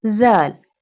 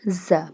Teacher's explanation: Pronounce it softly. It pronounced from the tip of the tongue touching the inner edges of the top two front teeth.